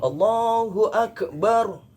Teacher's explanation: itu sudah bukan lagi huruf kaf tapi huruf qaf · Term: qalqalahnya